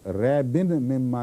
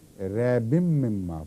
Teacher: ریبن تھا لفظ, آگے من سے میم شروع ہو گئی نا, من کی میم, تو ریبن مما نہیں پڑھنا, ریبم مما پڑھنا ہے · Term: میم نون کے غائب ہونے